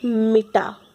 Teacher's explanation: प्रत्येक शब्द का उच्चारण करते समय किसी एक अक्षर पर अधिक बल दिया जाता है, जैसे मिटा। मिटा में ट पे अधिक बल दिया जा रहा है। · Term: शब्द बलाघात